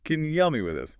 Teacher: The vowel in you becomes a weak schwa sound. And help me links together smoothly, sometimes sounding almost like helmy. The P sound often being very light or blending straight into the M.